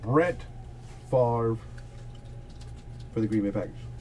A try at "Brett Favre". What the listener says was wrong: The V comes before the R.